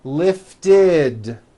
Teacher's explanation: if a word ends in a t or a D sound we add the ending ID which is a vowel ER followed by a d which is voiced